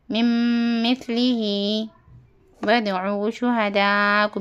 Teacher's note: بعد میم آیا تو اپنے کو کیا کرنا ادغام شفوی ہوتا میم کو میم سے ملا کر گنہ کے ساتھ پڑھا جاتا ہے اس کو ادغام شفوی کہتے من مثلہ ودعو شہداءکم میم ساکن کے بعد میم آیا ہے